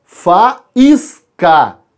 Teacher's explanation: Tenho 3 sílabas, o A e o I se separam porque são duas vogais fortes iguais, formando um hiato também